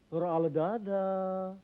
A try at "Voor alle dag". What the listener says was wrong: Bukan dadah, goblok. Voor alle dag.